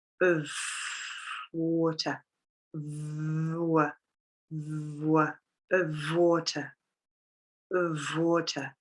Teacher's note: I'd like a glass, I'd like a glass of, I'd like a glass of, I'd like a glass of water, We're joining the v to the w.